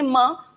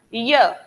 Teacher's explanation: म आप बोल के देखेंगे, म हवा को ज्यादा रुकना पड़ा, य कंपैरेटिवली कम रुकना पड़ा, रुकना पड़ा स्वर से ज्यादा रुकना पड़ा, पर व्यंजन से कम रुकावट हुई, स्वर से ज्यादा व्यंजन से कम, इसलिए कहलाए अर्ध स्वर, आधे स्वर हैं।